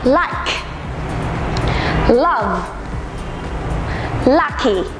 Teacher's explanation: lưỡi của các bạn phải nâng lên và đặt ngay phía sau hàm trên nhé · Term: âm L